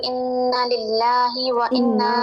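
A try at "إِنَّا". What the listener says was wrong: Drop ہو رہا ہے، انا الف مدہ ہے، ہے، ان الصفا الف مدہ آپ نے پڑھا تھا، الف ساکن ماقبل فتح ہو زبر ہو تو وہ الف مدہ ہوتا ہے، اسے 2 حرکات جتنا یعنی ایک الف جتنا لمبا کیا جاتا ہے. جی لمبا کیجئے.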